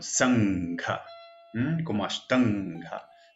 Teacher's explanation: Pertenece al grupo gutural. Entonces voy a utilizar la nasal gutural.